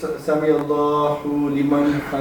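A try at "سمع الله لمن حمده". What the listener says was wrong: نہیں ہو نہیں, ایک تو موٹی ہا ہے اور ایک پیش ہے. ہو نہیں ہو. لمبا بھی نہیں کریں گے کیونکہ الٹی پیش نہیں ہے, وہ بھی نہیں آگے.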